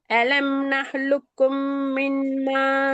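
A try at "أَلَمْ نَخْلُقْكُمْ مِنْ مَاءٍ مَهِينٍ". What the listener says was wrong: ஷத்து போதா, ஷத்து போதாது. அலம் நஹ் லுக்கும், லுக்கும் ஷத்த உச்சரிக்கணும்.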